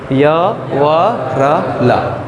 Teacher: जो अंतस्थ वर्ण हैं भैया, होते तो ये भी स्पृष्ट हैं, किंतु ये ईषत स्पृष्ट होते हैं। ईषत माने थोड़ा कम स्पृष्ट।